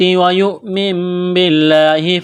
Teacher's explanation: یا کو حمزہ کے ساتھ ملائیں گے، جھٹکا دیں گے۔ نون ساکن کے بعد با ہے، تو یہاں پر اقلاب کریں گے، آواز ناک میں چھپائیں گے۔